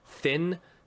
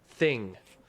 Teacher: the way the N is pronounced you're using the back of your tongue instead of the front